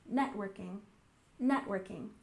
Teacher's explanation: And networking, stress the first syllable